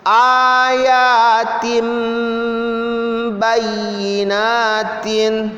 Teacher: Jadi ba-nya itu didengungkan. Dibaca kayak mim.